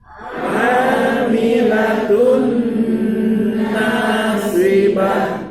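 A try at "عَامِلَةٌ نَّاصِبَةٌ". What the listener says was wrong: Ya, jangan amilatun ain. Amilatun nasibah.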